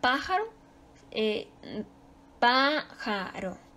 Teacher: Su sílaba tónica está en la antepenúltima sílaba. Se acentúa porque es esdrújula.